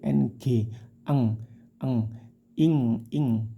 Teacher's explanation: samar disertai dengung samarkan tidak in tapi disamarkan ke huruf qof khusus ifanya qof dan Kaf itu samarnya seperti ng eng eng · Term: ikhfa